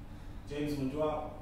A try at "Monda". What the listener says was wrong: It's Monda, sir, the youth silent.